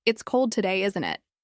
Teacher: If I say, "It's cold today, isn't it?" With rising intonation, it feels like I'm checking.